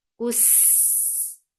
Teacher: Kus for dhamma circle lips attached with sin. Sin will get sifa of rakhawa and safir, and it is light. Kus. With fatha, the sound is short.